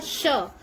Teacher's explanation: जैसे हमने बोला श, तो जब श बोला तो हमारी जो जीभ है तालू में लगी और संघर्ष करते हुए या घर्षण करते हुए बाहर आती। तो इसलिए इसको एक ऊष्मा देती है। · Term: ऊष्म व्यंजन